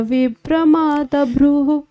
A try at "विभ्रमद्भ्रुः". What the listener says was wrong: विभ्रमद्भ्रुः होना चाहिए ना, आ बड़ा क्यों ले रहे हो आप?